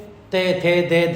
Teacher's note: जो ते वर्ग है वो दंत से है जी